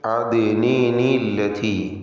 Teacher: അദ്നിൻ എന്ന തൻവീനിൽ ഉച്ചരിക്കപ്പെടുന്ന സുക്കൂൻ, അന്ത്യത്തിലുള്ള ഉച്ചാരണത്തിലെ സുക്കൂൻ, അല്ലത്തിയിലെ ഉച്ചാരണത്തിൽ വരുന്ന ലാമിൻ്റെ സുക്കൂൻ, ഇതിന് പരിഹാരമായിക്കൊണ്ട് നൂനിൻ്റെ സുക്കൂൻ മാറ്റി കസ്റാക്കുന്നു. അദ്നിൻ എന്ന ഉച്ചരിക്കപ്പെടുന്ന സാക്കിനത്തായ നൂനിന് കസ്ർ കൊടുക്കുക. എന്നിട്ട് അദ്നിനില്ലതി.